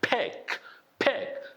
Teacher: the first letter, of course, is unvoiced P sound, unvoiced consonant sound, and then the K sound happening right back of your throat.